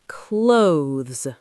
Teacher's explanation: for the th sound, your tongue comes out a little